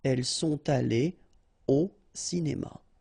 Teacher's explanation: no liaison after your participe passé here